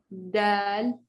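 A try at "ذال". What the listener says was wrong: No, make sure you can bring your tongue out more and vibrate. You want to get that vibration sound.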